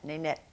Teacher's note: the tip of your tongue is curved up and you're making the closure with the tip of your tongue against the gum ridge behind the upper teeth